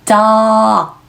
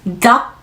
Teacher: K 사운드는 크, 공기 밖으로 나오는 소리 아니고 한국어 받침 기억 정도로 생각하셔서 공기를 막아주세요